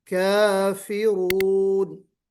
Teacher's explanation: काफिरून, रा मोटा पढ़ा जाएगा, काफिरून।